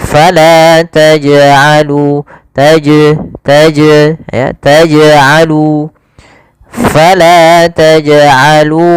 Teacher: Ini tambahan hamzah. Harusnya tidak ditambah dengan hamzah. Hanya memantul saja. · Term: qalqalah